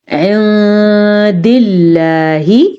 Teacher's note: لفظ اللہ کو ہم نے باریک پڑھا کیونکہ لفظ اللہ سے پیچھے حرف کے نیچے زیر ہے، لیشترو،